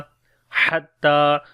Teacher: ہا کو گلے کے درمیان والے حصے سے پڑھیں گے ، تا کو لمبا کریں گے، کھڑی زبر ہے، حتی تأتیہم